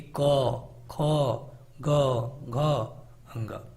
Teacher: जिसका उच्चारण गले से आए उनको हम कंठ व्यंजन कहेंगे